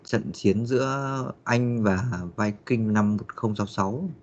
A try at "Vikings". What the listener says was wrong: Cái lúc mà mình phát âm thì em để ý là mình hay thiếu cái âm S sound ở cuối.